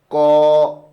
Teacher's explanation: ক বলার সময় হালকা বাঁধা পেয়ে আবার ছেড়ে দিচ্ছে ধ্বনিটা